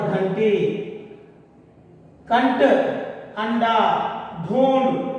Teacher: टा, ठा, डा, ढा इन अक्षरों से पहले जो अनुस्वार आया है उसका उच्चारण इसी वर्ग का पंचम अक्षर अना का उच्चारण किया जाता है